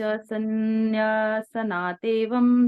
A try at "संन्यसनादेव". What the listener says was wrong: संन्यसना देव, देवम नहीं बेटा। न कर्मणा अनारंभा नैष्कर्म्यम पुरुषोश्नुते न च संन्यसना देव सिद्धिम समधिगच्छति।